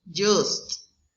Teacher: It's palato-alveolar and affricate.